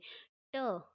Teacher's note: जीभ मुड़कर वापस आ रही है, मुड़कर ऊपर स्पर्श करके वापस आ रही है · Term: मूर्धन्य